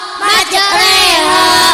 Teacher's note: Imalah yaitu membaca antara fathah dan kasrah